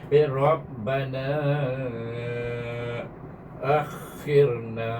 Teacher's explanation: Rabbana saya baca panjang na tu kerana saya menyambung terus dengan hamzah sana. Akhirna, baik, na sana dia baca dua harakat saja. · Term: mat jaiz munfasil